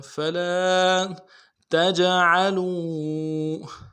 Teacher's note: تجعلوا جیم میں حروف قلقلہ میں سے قلقلہ کریں گے، عین کو واضح کریں گے. لو واو مدہ ہے، ایک الف مدار میں کھینچیں گے.